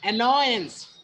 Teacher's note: The word takes the stress on the second syllable